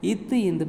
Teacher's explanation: நாவின் நுனி மேல்வாய்ப்பல்லின் அடிப்பகுதியை பொருந்ததால் ஏற்படுகிறது.